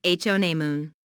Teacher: Listen to the stress on honeymoon. There are 3 syllables in honeymoon, with the stress on the first syllable, honeymoon.